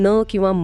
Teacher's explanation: जेव्हा आपण न किंवा म म्हणतो तेव्हा घशातून येणाऱ्या हवेचा काही भाग थेट नाकातून बाहेर पडतो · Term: अनुनासिक